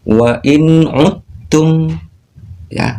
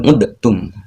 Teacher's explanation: Jadi huruf dal sukunnya dileburkan